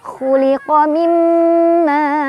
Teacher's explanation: tanwinnya dibaca samar-samar sambil berdengung. Tingkat kesamarannya lebih besar dibandingkan dengan dengungannya. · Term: ikhfa aqrab